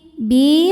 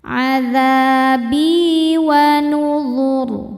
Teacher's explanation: Bi hukumnya mad tabi'i dhahiri. Sebab ada ya sukun sebelumnya kasrah. Cara bacanya panjang 2 harokat.